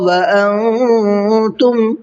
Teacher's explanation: انتم کے اندر اخفا کا قاعدہ ہے، تھوڑا سا ناک میں آواز روک کر کے پڑھیں گے